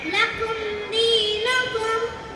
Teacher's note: நான் தான் லாம். என்னுடைய பிறப்பிடம் நாவின் முன்பகுதி இரு ஓரங்கள் வாயின் மேல் பகுதியை நோக்கி இணையும் போது நான் உருவாகிறேன்.